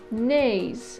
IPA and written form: nɪiz (knays)